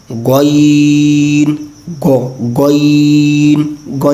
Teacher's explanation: इसको भी हमें पूर्व पढ़ना है और जहाँ से खौ निकाला उसी मखरज को महसूस करके जो हलक का ऊपर वाला हिस्सा है वहाँ से हम पढ़ेंगे गईन गो गईन गईन। हुरूफ मुस्तालिया में से इसको पूर्व भी पढ़ना है, इसलिए इसकी आवाज़ थोड़ी मोटी भी होगी